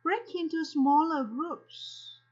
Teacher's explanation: Âm phụ âm k đã được nối với âm nguyên âm đầu e.